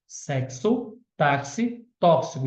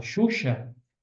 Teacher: na palavra taxi eu tenho x com som de KS